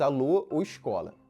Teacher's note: o que a gente tem na fala carioca é um alongamento bastante marcado